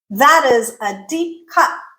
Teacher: That cut at the end has a glottal stop.